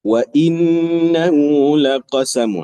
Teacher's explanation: Wajibul ghunahnya. Ada ghunah di situ dua harakat. Huruf nun ada syaddah.